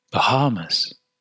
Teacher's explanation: the vocal cords are open but close just enough together that air passing between them creates friction so the air passing between the glottis creates just enough friction · the air passing between the glottis creates just enough friction and this is what determines the glottal h to be a fricative